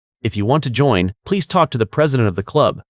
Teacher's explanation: This sentence has a natural break. Pause slightly after want to join.